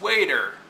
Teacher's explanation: The wait part is stressed, and the er is a suffix in this case, so it's unstressed.